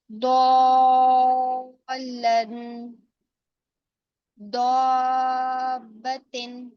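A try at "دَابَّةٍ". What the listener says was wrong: دا کو باریک کیجیے، دابتن۔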